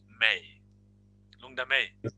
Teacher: the lungdam ends with the M, which is the consonant letter, and is followed by the vowel. So we connect the sound.